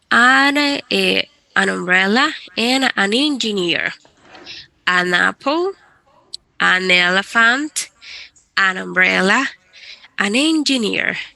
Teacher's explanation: de hecho lo unimos. Únalas como si fuesen una sola palabra.